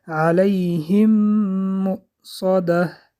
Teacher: علیهم مؤصده در اینجا ادغام شفوی. حرف میم یکم به حرف میم دویم در آورده از دماغ برآورده خوانده می شود